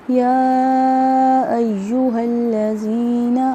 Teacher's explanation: یا مدہ ایک الف کے برابر لمبا کریں گے